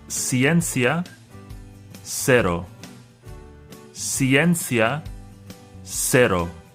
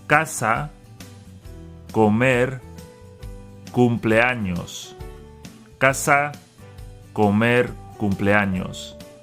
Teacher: The consonant C makes the S sound S before I and E, and the K sound K before A, O, and U.